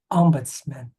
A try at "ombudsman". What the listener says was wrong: Yeah, that's pretty much it.